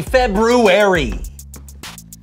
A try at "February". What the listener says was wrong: Did you say February? I know there's an R there, but most people don't pronounce it.